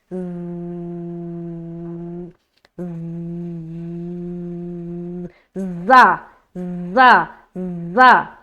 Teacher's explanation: اور کچھ حصہ ثنایا علیا کا بھی ملتا ہے، لیکن آپ ثنایا سفلا کا کنارہ سے ملا کر زا کو ادا کریں